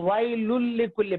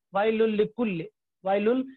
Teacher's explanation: تو وائل لکل پڑھیں گے، وائل نون کی آواز نہیں، بالکل اس کی صفت ہی باقی نہیں رہے گی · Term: ادغام تام